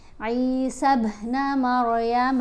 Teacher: عین کو تھوڑا سا کھینچ کر پڑھیں گے کیونکہ یہ زیر کے ساتھ یا ساکن حرف مدہ ہے